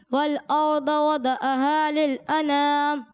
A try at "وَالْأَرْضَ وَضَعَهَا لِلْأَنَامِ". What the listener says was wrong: اچھا یہ وَضَعَهَا نہیں ہے. ٹھیک ہے؟ ایسا لگ رہا ہے آپ دال میں کلکلا کر رہے ہیں. وَضَعَهَا.